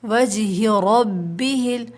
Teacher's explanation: را پہ جب زبر ہوتا ہے نا اس کو موٹا پڑھتے ہیں